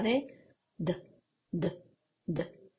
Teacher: sí que notamos una pequeña vibración